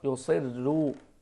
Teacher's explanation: هذه لما نقرأ لورش رحمه الله يكون مع ترقيق الراء